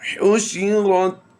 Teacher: حا کی ادائیگی ہم نے بالکل حلق کے درمیان والے حصہ سے ادا کرنی ہے